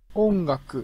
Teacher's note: Et vous voyez que sur le on et sur le g, ça va passer par le nez. Ongaku. Parce qu'on a ce on avant qui est nasalisé.